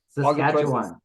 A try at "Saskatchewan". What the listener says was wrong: Also, you're still way too many syllables in Saskatchewan. Just Yeah, and you're doing okay, but he's hitting every letter.